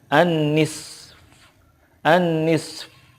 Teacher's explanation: Nah, ketika waqaf, sodnya itu disukunkan, fa-nya juga disukunkan, tetapi suara fa itu tidak zuhir banget gitu, hanya sedikit saja